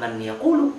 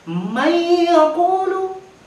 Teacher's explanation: Man yaqulu, setelah kita leburkan, kita masukkan huruf idgham bi gunnah. Maka dia dibaca dengan dengungan. Hilang suara huruf nun matinya. Bukan man yaqulu, tapi may yaqulu.